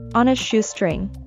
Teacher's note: remember to link the words on with a when you speak fast to sound more smoothly